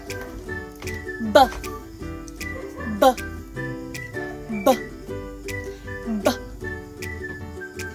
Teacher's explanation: Ang letrang B ay pasara rin ngunit may tunog sa puntong panlabi. Binibigkas ito katulad ng P pero may panginginig ng mga tinig na kalamnan.